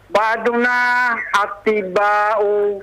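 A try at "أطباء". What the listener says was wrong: Atibba'u. Yang ditasdid ba-nya. Ta-nya jangan ditasdid.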